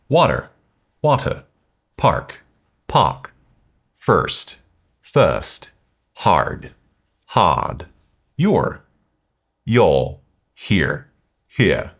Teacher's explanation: In British RP, the R sound that comes after a vowel is often dropped. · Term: drop the R